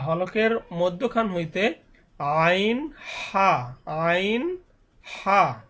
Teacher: হলক মানে কণ্ঠনালী, কণ্ঠনালীর শুরু হইতে উচ্চারণ হবে হামজা হা, এবং মধ্যখান হইতে, অর্থাৎ গলায় একটু চাপি উচ্চারণ হবে